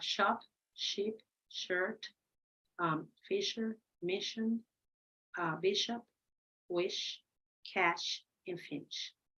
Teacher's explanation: there is no stop of the air of the flow · Now, when you say shh, shh, nothing happens in your throat, okay? So it's voiceless. It's palato-alveolar because it's a little bit after the alveolar ridge, and it's before the hard palate, okay, over here.